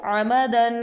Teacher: ain pronounced from the middle part of throat